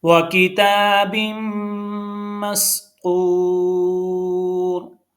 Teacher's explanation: इसमें भी रा को पुर पढ़ा जाएगा, क्यों कि रा साकिन हो गया है हालत वक्फ की वजह से। तो इस जो तो के ऊपर पेश है, ये इसका असर रा के ऊपर भी जाएगा।